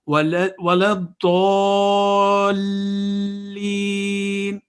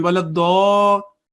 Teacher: You see, on dad there is a madda kabira and it is joining with lam. There is tashdid on dad and there is a tashdid on lam. So those two letters should be very prominent and the elongation should be calculated very properly.